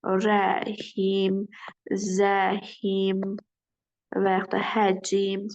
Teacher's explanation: Müxtəlif cisli samitlərimiz haqqında yadda saxlayın ki, sonra müxtəlif cisli samitlə bitən sözlərdə əsasən məsələn rəhim sözüdür, zəhim sözüdür, həcm kimi sözlər var ki, tələffüsdə bu samitlərin arasına bir qapalı i saytı daxil olur. Olur rəhim, zəim və yaxud həcmim formasında olur.